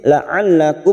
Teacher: mim sukun bertemu ta idhar safawi, dibaca jelas tanpa mendengung